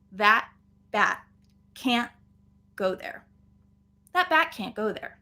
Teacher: we actually have three stop t's in this sentence that bat can't go there that bat can't go there but